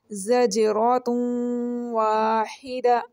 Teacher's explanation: جیم کے اوپر کیا ہو رہا ہے ہلکا سا جھٹکا دیا جا رہا ہے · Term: قلقلہ